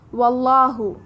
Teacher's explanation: لا انفصام لها واللہ سمیع علیم. واللہ اللہ کے لام سے پہلے زبر ہے، لام جلالہ موٹا پڑھا جائے گا، کھڑا زبر ہے، ہمیں 2 کا مد دینا ہے.